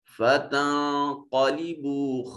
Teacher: نون کو اپنے مخرج میں چھپا کر پڑھیں گے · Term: اخفا